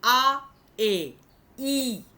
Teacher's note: আটা, আমি ওই টেবিলটা দিলে বুঝতে পারবে, আয়ের হর্ষইয়ের থেকে এটা আয়ের অনেক কাছে, আ এ ই উচ্চারণ যদি করি আ এ খুব কাছাকাছি, অথচ আ ই অনেক দূরে। ধ্বনিগত তুমি স্বরধ্বনি অ আ হ্রস্ব দীর্ঘ, তার যে অবস্থানটা দেখে এটাকে বিচার করো না, এটাকে বিচার করতে হবে উচ্চারণের দিক থেকে, অ আ এ এরকম।